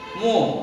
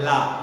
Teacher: এই টুট দুটা আমরা যখন মৌ উচ্চারণ করি তখন আমাদের টুট দুটা গোলাকৃতি হয়, গোলাকৃতি মো। আবার যখন আমরা লা উচ্চারণ করি তাহলে আমাদের টুট দুইটা প্রসারিত হয়